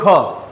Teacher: ખ ની અંદર ક્યાંક અંશે હ ઉમેરાતો હોય ને એવું લાગે · એવા તમામ વ્યંજન કેવા છે અલ્પપ્રાણ છે બરાબર મહાપ્રાણ એટલે કે તમે ઉચ્ચારણ કરતા સમયે હવાનો જથ્થો ફોર્સ સાથે વધુ માત્રામાં નીકળે છે બહાર ફેફસા દ્વારા બરાબર તો એ મહાપ્રાણ અને ઓછી માત્રામાં નીકળે